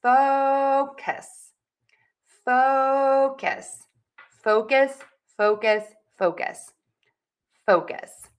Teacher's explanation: That means it is going to be louder, longer, higher in pitch. Syllable number 2 will be shorter, softer, and lower in pitch.